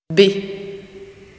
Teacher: The burst, the explosive opening of the lips, of the consonant b becomes audible.